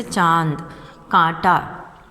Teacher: अनुनासिक का उच्चारण मुख व नासिका दोनों से होने के कारण हल्का तथा कोमल होता है